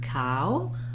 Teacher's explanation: the o w then you can visualize it that way um you just want to move from a more open unrounded vowel to a more closed rounded vowel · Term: diphthong